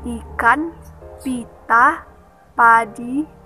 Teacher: Fonem I adalah vokal tertinggi depan tak bulat. Vokal ini dibentuk dengan kedua bibir agak terentang ke samping.